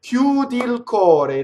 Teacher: So what happens is the I just elides